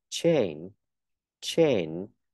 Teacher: có âm n âm mũi thì ngân ra